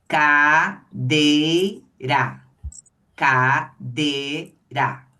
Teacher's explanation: o i ele sai no mesmo movimento de boca que a gente faz quando pronuncio o é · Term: semivogal